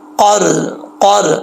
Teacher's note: زبان کی جڑیں لگے گی، اس کا جو ساتھ جو نرم حصہ ہے تالو کا، تو یہ قاف پڑھا جائے گا